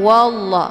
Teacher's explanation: Jadi dibacanya wall bukan walla tapi ditebalkan yaitu bacaan tafkhim